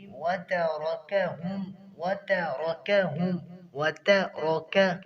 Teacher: تا بھی باریک ہے اور را موٹا ہے، را کو موٹا کرنا ہے کیونکہ اس کے اوپر فتح ہے، اور آگے کاف، کاف بھی باریک ہے تو اس کی بھی احتیاط کرنی ہوگی۔